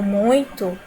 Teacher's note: A palavra muito, quando eu digo muito, né, pela pronúncia, percebe-se também que o U, ele tem a pronúncia forte e o I ele vai ter a pronúncia mais fraca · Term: ditongo decrescente